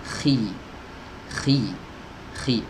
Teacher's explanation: ini huruf yang keluar dari tenggorokan bagian atas. Ya, tenggorokan bagian atas. Khi, ada ngoroknya sedikit. Khi. Ingat, ketika dia kasroh, maka bibir bawah juga ikut turun kalau mau sempurna. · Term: huruf kha